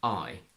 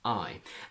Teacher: This diphthong is quite deep in British, I, and fairly light in American, I.